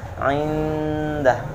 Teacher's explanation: Dibaca tidak ada dengungan, kemudian nun sukunnya dijelaskan dan dalnya ini ya.